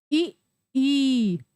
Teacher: तो हमारी जीभ के जो दोनों किनारे हैं वो ऊपर वाले तालु को स्पर्श कर रहे हैं।